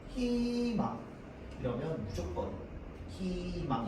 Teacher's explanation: 그냥 모음 이중모음 의는 뭘로 발음? 이 로만 발음합니다.